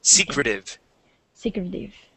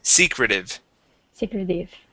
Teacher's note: stress at the very beginning of the word secretive